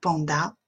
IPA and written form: ˈpændə (panda)